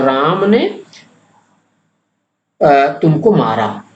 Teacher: राम पर बल पड़ रहा है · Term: बलाघात